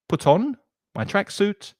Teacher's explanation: Notice that the linking pronunciation there, the T in put connects to the vowel sound